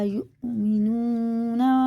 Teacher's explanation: واو نہیں پڑھا جائے گا، حمزہ پڑھا جائے گا، حمزہ میں جھٹکا ہوتا ہے